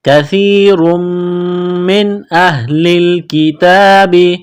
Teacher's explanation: نون ساکن کے بعد حمزہ ہے، حروف حلقی ہے تو نون ساکن پر غنہ نہیں کریں گے